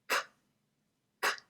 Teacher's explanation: It's made by the back of the tongue raising up and connecting with that soft palate or velum. K, k. Also the G sound, g, g. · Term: velar sounds